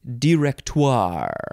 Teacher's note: director you can emphasize the second syllable or the third syllable I feel like emphasizing the third syllable is the best way